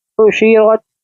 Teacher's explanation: रा के ऊपर ज़बर है इसलिए इसको हम पुर पढ़ेंगे, यानी कि मोटा पढ़ेंगे